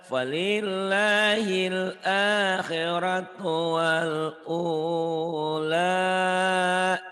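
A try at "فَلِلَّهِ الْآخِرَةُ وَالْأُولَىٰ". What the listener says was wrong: Punya panjang. Wal ula.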